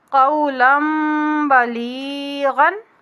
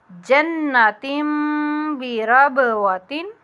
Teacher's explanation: اب دو زبر یا دو زیر دو پیش تینوں جو ہے ان کا بھی آہر دیکھیں، تن تین تن، آہر پہ نون ساکن ہی آ رہا ہے، اس نون ساکن کو ہم نے میم میں بدلا ہے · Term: اقلاب